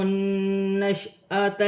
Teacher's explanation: نون مشدد میں غنہ کیا جائے گا